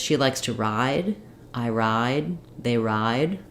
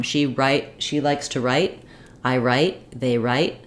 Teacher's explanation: D doesn't come out but I'm holding this vowel longer so when there's a voiced sound like a d we hold the vowel longer and when there's a voiceless sound like a t uh we hold the vowel shorter